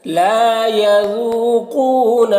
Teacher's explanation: ذال کی آواز دیکھیے. زو نہیں پڑھنا ہے